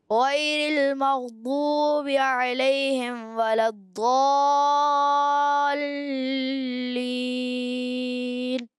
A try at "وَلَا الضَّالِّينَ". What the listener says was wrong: اچھا علیہم کے بعد ولا الضالین، واو جو ہے آپ کا ادا ہوا ہے جیسے اوپر والے ہونٹ جو ہیں آپ کے نیچے والے، اوپر والے دانت نیچے والے ہونٹ سے لگے، تو واو ایسے نہیں، واو ہونٹوں کی گولائی سے.